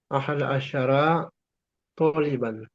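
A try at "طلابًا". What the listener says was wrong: Bukan tuliban. Jangan dibaca tuliban. Taliban.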